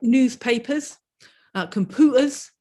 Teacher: The pure U sound doesn't exist locally.